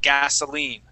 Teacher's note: So that I here is going to take the form of a long E sound. So that long E sound is that E, or even that Spanish I.